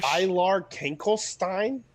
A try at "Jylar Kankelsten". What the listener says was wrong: Not Stein.